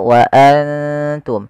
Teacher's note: kita samarkan nunnya kepada huruf ta dan ditahan 2 harakat. Bukan hanya sekedar wa antum, tapi dia wa antum ditahan. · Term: ikhfa